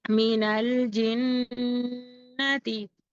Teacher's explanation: کو چھوڑ دیں گے، جیم کو نون سے ملائیں گے اور تشدید ہے، شدت اور سختی کے ساتھ پڑھیں گے، غنہ کریں گے ایک الف کی مقدار ، تا کو جلد پڑھیں گے، حرکت ہے، من الجنتی لیلۃ